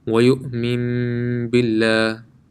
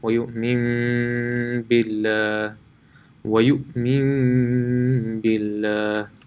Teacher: If after noon sakin and tanween the letter ba comes, then noon sakin and tanween will change into a meme